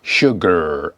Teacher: American English pronounce the final R, usually, as in sugar